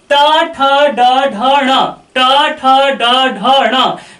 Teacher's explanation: टा, ठा, डा, ढा, णा का जब आप उच्चारण करेंगे तो जिह्वा का अग्र हिस्सा मूर्धा के पास पहुंच जाएगी, वहां का प्लेस सकरा होगा और प्राणवायु वहीं बाधित होगी। इसलिए टा, ठा, डा, ढा, णा का जो उच्चारण स्थान होता है वो होता है मूर्धा। · जब आप टा, ठा, डा, ढा, णा का उच्चारण करते हैं तो जिह्वा का अग्र हिस्सा मूर्धा के पास पहुंच जाती है।